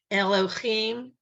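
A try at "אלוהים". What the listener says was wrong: Nope, it's not a ch. This is a hey.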